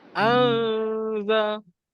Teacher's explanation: Kalau ada bunyi N tu salah lah. Sebab lidah kita kat bawah je.